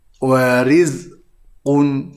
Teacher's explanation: cara bacaannya hendaklah dibaca dengan tarqiq, iaitu dengan ada senyuman